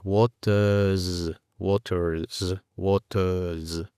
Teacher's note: La R casi ni se pronuncia.